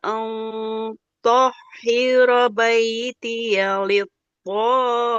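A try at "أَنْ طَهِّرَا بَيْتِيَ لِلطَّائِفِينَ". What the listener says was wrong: Au tohiro. Ro-nya panjang. Kelewat dia.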